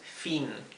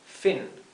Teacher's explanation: Es una I más cortita y más cerrada. Y la última es form.